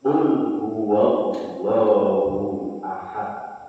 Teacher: Kalau fathah dengan dhamma, ya, maka dibaca tafkhim, tebal.